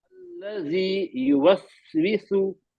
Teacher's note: वक्त लेना है, यहाँ पे सांस जारी रहेगी, वसवासिल खन्नास, अल्लजी, जी में जबान की नोक बाहर आएगी